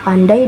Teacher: bunyi vokal bergeser dari satu posisi ke posisi lain dalam satu tarikan nafas, menghasilkan kesatuan bunyi yang khas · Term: diftong